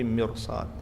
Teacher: Kecuali yang ketemu huruf ist'la seperti mirsad. Setelah ro sukun ada huruf shad maka rnya tebal.